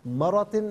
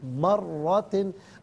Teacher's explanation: यहाँ ज़बर पुर करके पढ़ा जाएगा और चूँकि तशदीद की अलामत मौजूद है तो रॉ को जमाओं के साथ पढ़ेंगे, मरातिन नहीं, मर्रातिन।